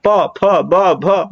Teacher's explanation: पा, प, फ, ब, भ, म, देखो दोनों ओठ क्या हो रहे हैं, आपस में टकरा रहे हैं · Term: ओष्ठ